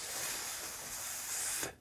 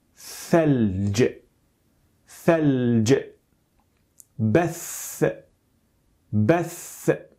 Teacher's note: one of the three and that is that sound that is produced by placing the tip of the tongue between the front teeth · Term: interdental